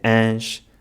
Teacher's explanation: The diphthong “ões” becomes “ôns”, the diphthong “ães” becomes “âns”